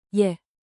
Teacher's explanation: With rising intonation, think 2 ascending notes.